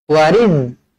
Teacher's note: huruf zai jangan dibaca melantun kerana huruf zai bukan huruf qalqalah.